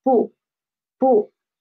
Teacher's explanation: it is a neutral tone. So we should pronounce it soft and quick, soft and quick.